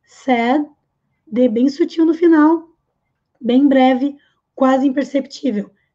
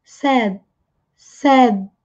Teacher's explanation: D bem sutil no final, bem breve, quase imperceptível